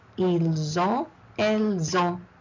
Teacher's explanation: In ils ont, plural, I do not pronounce the S. I do not pronounce the T. I pronounce the S in the second word.